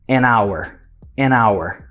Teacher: o hour tem um H lá, mas esse H, ele é uma silent letter. A gente não pronuncia. Então, a gente começa com o som de A.